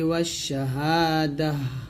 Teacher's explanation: যদি আমরা এখানে থামি তাটা সাকিন হবে, হা সাকিন